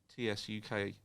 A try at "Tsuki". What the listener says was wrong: It's a silent T.